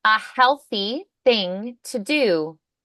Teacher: So healthy, unvoiced, thing, unvoiced.